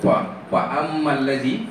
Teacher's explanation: Sebab ada sifat hamas pada fa. Sebab tu kalau kita sebut fa ammal ladzi, kita kena fa ada angin keluar. Kalau kita baca pa ammal ladzi, tu tak betul.